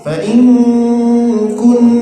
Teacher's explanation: nun mati berjumpa dengan kaf. Nah, ikhfa disembunyikan ke huruf kaf.